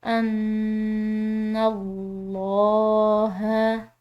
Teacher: نون مشدد ہے، مشدد نون پر غنہ کیا جاتا ہے، اس پر ہم غنہ کریں گے، اور ساتھ میں جو یہ لفظ اللہ کی لام ہے اس کو ہم نے پورا ادا کرنا ہے کیونکہ نون کی زبر ہے